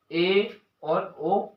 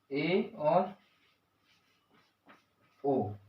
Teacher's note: अर्धसंवृत स्वरों के उच्चारण में जीभ ऊपर उठकर बीच में रहती है, मतलब जो जीभ का बीच सेंटर है वो थोड़ी सी सेंटर से ऊपर रहती है, ना सबसे ऊपर टच भी नहीं होती और थोड़ी सी ऊपर से नीचे रहती है।